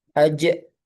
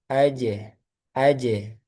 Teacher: ketika qalqalah jangan ditambah hamzah. Hamzah contohnya ajah itu kurang tepat.